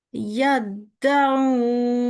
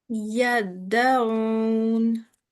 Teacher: In this case, it does not contain or carry a sukoon, so it's in this case not going to be read with a kalkala. It has a tashdid sign and it has a fatha sign, so it is yaddaun.